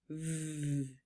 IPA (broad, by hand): v